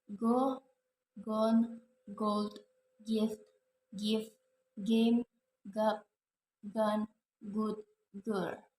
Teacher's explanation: Voiceless velar stop sounds ka, keep, kill, kin, kiss, car, kind, cook, cool, and cute, and chemistry. Voiced velar stop sounds